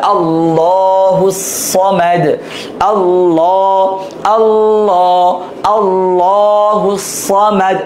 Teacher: এই যে তাজদিদের পাশাপাশি জবরটা আসছে, আবার কোন হরফ দেখা যায় একটা হরফ দুইটা হরফ বাদ দিয়ে আসছে, কিন্তু আল্লাহ শব্দের তাজদিদের ডানের যে হরকতটা আছে সেটা ধর্তব্য হবে, সেটা জবর অথবা পেশ হইতে হবে, তাহলে হচ্ছে লামটাকে পুর বা মোটা করে পড়তে হবে। আল্লাহুস সামাদ, আল্লাহ, আল্লাহ, আল্লাহুস সামাদ, মানে আকার দিয়ে পড়া যাবে না লটাকে, আল্লাহুস সামাদ।